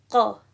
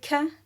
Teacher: It's kind of like the k sound in English, but you have to go much further back in your tongue. So where the back of your tongue and your tonsils meet, you close the gap there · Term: qaf